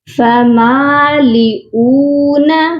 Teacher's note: فمالئون حمزہ واو پیش او. حمزہ کو جب واو کے ساتھ پڑھیں گے تو کھینچ کر پڑھیں گے کیونکہ یہ واو مدہ ہے